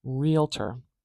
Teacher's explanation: stress is at the beginning of this one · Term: primary uh stress